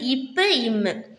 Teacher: மேல் இதழும் கீழ் இதழும் பொருந்துவதனால் பிறப்பது தான் இப்பு இம்மு.